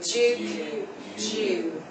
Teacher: the liquid U sound in Duke and Jew, the two double dots there means it's very pronounced and long.